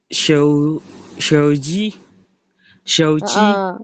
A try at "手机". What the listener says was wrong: Paling shouji panjangin dikit.